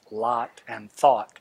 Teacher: the distinction of the vowel sounds in words like lot and thought, which are pronounced the same for a good number of Missourians, particularly for people under the age of 40 or so.